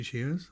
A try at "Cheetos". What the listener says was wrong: Cheetos? Is there a T in that word? Cheetos.